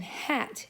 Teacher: And then the h, as in hat, is a throat sound